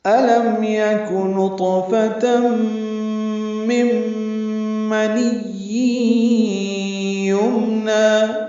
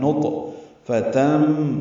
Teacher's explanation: نطفہ طا ساکن اور پر ہے اور اس پہ قلقلہ ہے ، نطفتم، تم میں ادغام ہے، تنوین کے بعد میم آنے